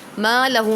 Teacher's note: یحسبو ان پہ نون مشدد ہوگا تو جماؤ کریں گے، ما لہو ما پہ الف مدہ ہو رہا ہے، لہو پہ حرف مدہ کے بعد حمزہ دوسرے کلمے میں ہے تو مد منفصل ہو رہا ہے